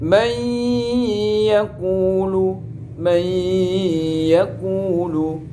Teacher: Sampai lihat di situ lafaz man yaqulu, nun mati bertemu dengan ya, nunnya dihilangkan, dileburkan, langsung masuk ya. May langsung huruf ya. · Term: idgham bi gunnah